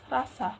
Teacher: pertama R getar, standar atau formal